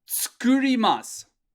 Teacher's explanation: there's a little guy rising up on the ooh and dropping down on the a that's for intonation